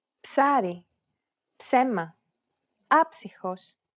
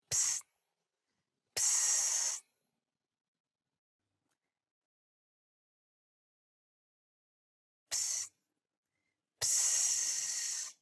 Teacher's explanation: The last consonant sound is Ψ, ψάρι, ψέμα, άψυχος. this consonant sound is like a combination between a P sound and an S sound